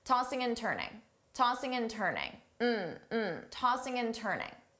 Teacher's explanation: So I will say all 3, tossing and turning, as one word.